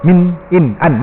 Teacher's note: hujung lidah kita menempel pada belakang gusi atas tu kan. Ninu kan, hujung lidah tu kena pada belakang gusi atas tu, pangkal langit tu kan. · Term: nun original